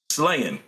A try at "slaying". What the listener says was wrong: It still sounds like you're saying slanging.